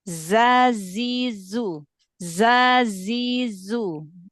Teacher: desisan sofirnya itu keluarnya dari celah antara gigi seri atas dan gigi seri bawah. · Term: huruf zai